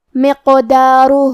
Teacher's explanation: ہا پہ الٹا پیش ہے تو یہاں مد صلہ صغرا ہے، ہم اپنی آواز 2 مد کے برابر لمبی کریں گے